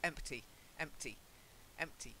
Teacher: The P is almost not there. It's almost silent.